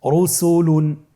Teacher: রয়ের উপরে পেশ এসেছে, তাহলে র হরফটিকে মোটা করে পড়তে হবে।